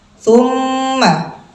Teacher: nah ini mim tasdid ghunah musyaddadah karena gunah musyaddadah ini gunahnya Kamil sampai dengan Akmal